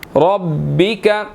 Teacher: را کے اوپر زبر ہے تو را کو ہم نے یہاں پر موٹا ادا کرنا ہے